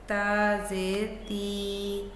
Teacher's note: ता जो है बेटे बारीक और नर्म आवाज़ है, ठीक है। ज़ुबान की नोक ऊपर के सामने वाले दांतों की जड़ से लगती है तो ता की आवाज़ निकलती है। इसी तरह तो ज़ेर ती।